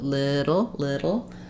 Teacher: it's not a D sound it's a flap sound but it's voiced like a D um and we're just gentle on that D sound so little